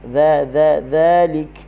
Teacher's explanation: huruf dzal hujung lidah berada di hujung gigi atas